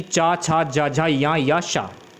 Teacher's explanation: जिन वर्णों के उच्चारण में जीवा का मध्य भाग तालु से स्पर्श करता है उन्हें तालुब वर्ण कहते हैं